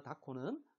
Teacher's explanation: 흐하고 그가 만나서 크가 됐어요